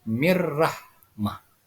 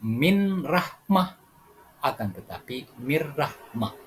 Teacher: Idgham Bilaghunnah adalah suara nun sukun atau nun mati dimasukkan ke dalam suara RAA dan tidak boleh didengungkan artinya Perhatikan cara membacanya mirrahmah bukan kita baca dengan min Rahmah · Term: idgham bila ghunah